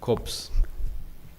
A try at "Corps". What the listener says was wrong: it is Co. We don't pronounce the S.